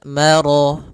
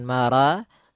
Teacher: Maka ro-nya tebal, maro, bukan mara, tapi dia maro, sempurnakan lafal ro-nya, marajal.